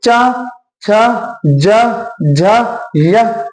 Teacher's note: एक बार उच्चारण करेंगे तो आप पता करेंगे जीभ किससे टकरा रही है? ऊपर वाले तालु से टकरा रही होगी। · जीभ तालु से टकरा रही है, इसीलिए च वर्ग कैसी ध्वनियां होते हैं? तालव्य व्यंजन ध्वनि